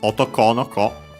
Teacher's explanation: And this is an exception because usually the no would make it unaccented, but here we keep actually the accent, so otoko no ko is accented just like otoko, the ko at the end.